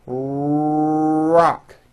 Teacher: notice how my lips are coming forward and my tongue moves back in my mouth and I push out the r sound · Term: American R sound